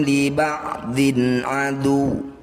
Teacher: mustaq dah tanwin bertemu wau disebut bacaan am bunah cara bacanya bunyi dumah tanwin masukkan pada huruf wau dengungkan dua harakat ketika dengung posisi bibir sudah mencucu